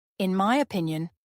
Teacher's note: Notice the smooth link between in and my. The stress falls on the second syllable of opinion, opinion. · The stress falls on the second syllable of opinion, opinion. Listen carefully.